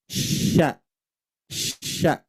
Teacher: Ini bukan ujung lidah. Ya, makhraj huruf shin keluar dari tengah lidah. · huruf shin ini posisinya di tengah dan ujung lidahnya tidak menempel ke atas, tidak menempel ke bawah. Tidak menempel ke gigi seri bawah, juga tidak menempel ke gigi seri atas.